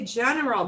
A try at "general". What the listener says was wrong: And you punch the al more. General.